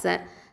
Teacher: சீன் அப்படிங்கிறது வந்து தரஃபுல் லிசான், நுனி நாவு எழுத்து.